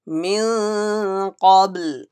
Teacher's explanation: Ba has Qalqala read with echo sound.